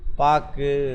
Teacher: வல்லின மெய் ஏறிய உகரம் தன் ஒரு மாத்திரை அளவிலிருந்து அரை மாத்திரை அளவாக குறைந்து ஒலிக்கும் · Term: குற்றியல் உகரம்